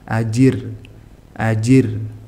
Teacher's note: dibaca tarqik atau tipis jika harakat sebelumnya kasr